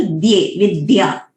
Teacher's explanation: ये द्ये जो है ये अल्प प्राण है, बहुत सारे लोग उसको प्रपद्ये बोलते हैं, वो प्रपद्ये नहीं है, प्रपद्ये है, अल्प प्राण, सिंपल द्ये, विद्या.